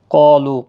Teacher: قاف اور الف دونوں پور پڑے جائیں گے. ابھی اوپر ہم نے آپ کو بتایا حروف مستعلیہ کے بعد جب الف ایک ہی کلمے کے اندر آتے ہیں تو دونوں پور پڑے جاتے ہیں.